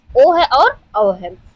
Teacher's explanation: कंठ और ओष्ठ से दोनों से मिलकर जो उच्चारित होते हैं